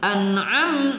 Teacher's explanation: An'am mim sukun bertemu ta adalah izhar syafawi tidak juga kita dengungkan